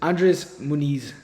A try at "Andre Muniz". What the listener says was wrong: There's no S in Andre.